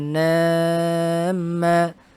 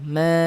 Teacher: harus agak panjang gunnahnya atau dipanjangkan gunnahnya